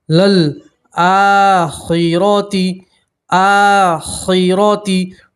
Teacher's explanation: را کے اوپر زبر ہے، را کو موٹا پڑھیں گے، خا کو ہی موٹا پڑھتے ہیں، ٹھیک ہے۔